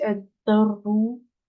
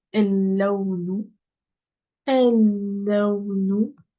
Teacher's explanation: il y a une shadda, donc je prononce pas le lem. Donc, c'est ad-darru.